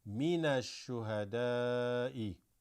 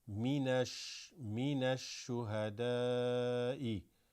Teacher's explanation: Huruf shamsiya, where you don't read al-shuhada, you read ash-shuhada. But coming from the noon here with a fatha, minash-shuhada'i.